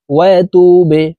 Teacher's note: বাকে নিচের দিকে ধাবিত করে ধাক্কা দিয়ে উচ্চারণ করতে হবে